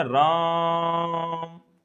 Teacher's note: राम इस तरह से खींचेंगे इन शब्दों को तो उसे हम लोग बोलते हैं प्लुत स्वर